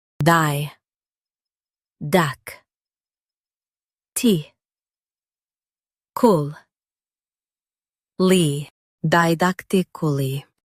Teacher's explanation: Stress dak and keep dically light.